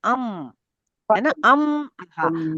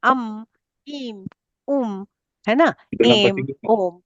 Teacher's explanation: नासिक्य वर्ण अनुस्वार जो अनुस्वार है वो मुख्य रूप से नासिका से उच्चारित होता है। अम है ना अम और ये अम का जो अनुस्वार है वो हम सभी स्वरों में लगाते हैं।